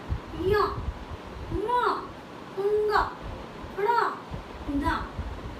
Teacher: जो ये जो 5 वर्ण हैं इन्हें अनुनासिक भी कहा जाता है, क्योंकि इन्हें नाक की सहायता से बोला जाता है